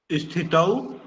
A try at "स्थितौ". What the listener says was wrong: नहीं, आप ई को छोड़िए और स्थितौ। अरे ई नहीं आएगा जी। स्थितौ।